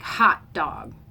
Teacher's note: it's usually equal stress or ice cream they're kind of the same weight